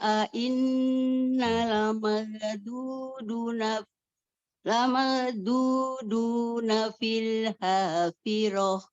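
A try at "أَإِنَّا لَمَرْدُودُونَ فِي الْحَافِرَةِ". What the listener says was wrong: Nanya inna, nanya itu panjang ya.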